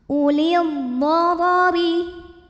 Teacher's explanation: Huruf ra dibunyikan secara tafkhim karena barisnya fathah, maka dibacanya tebal, pangkal lidah naikkan.